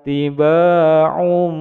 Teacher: tanwin bertemu dengan huruf ba di depannya menjadi bacaan iklab, panjang dua ketukan.